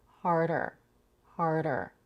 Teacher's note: We have a flap T between the R and the R colored schwa.